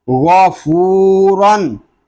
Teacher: गैन इसलिए पुर है कि ये हरूफ मुस्तालिया में से है, वाव मद्दा इसलिए हो रहा है कि वाव साकिन से पहले पेश आ गया है, रा इसलिए पुर है कि रा के ऊपर दो ज़बर की तनवीन आ गई है। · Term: गैनपुर